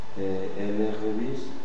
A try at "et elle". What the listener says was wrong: Et ne dis jamais est-elle. Attention, hein, je te dis tout le temps. La conjonction est, la prononciation de T, on ne la fait jamais.